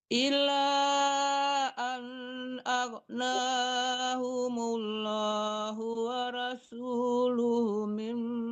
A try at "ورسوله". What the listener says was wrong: Hu-nya panjang. Hu-nya panjang. Rasul. Iya, hu-nya panjang.